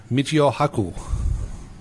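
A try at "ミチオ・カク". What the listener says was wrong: It starts with a K.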